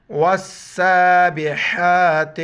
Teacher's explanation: یہ جو کڑا مد ہے اس کو ایک الف مقدار کھینچنا ہے